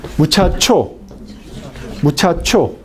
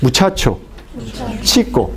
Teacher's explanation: Es una combinación entre las consonantes fricativas y las consonantes oclusivas. Empieza a pronunciar con las consonantes oclusivas y luego termina con la fricción. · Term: consonantes africadas